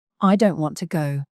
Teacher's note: the words don't and go are usually stressed